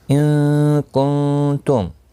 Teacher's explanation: دونوں جگہوں پر اخفا حقیقی ہوگا، گنہ کے ساتھ پڑھیں گے